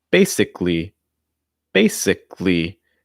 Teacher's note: the second a is not usually pronounced